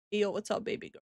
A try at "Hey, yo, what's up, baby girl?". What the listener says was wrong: Hey, yo, what's up, baby girl?